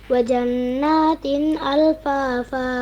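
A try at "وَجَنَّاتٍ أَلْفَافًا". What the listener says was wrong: Ya, bagus, lanjut.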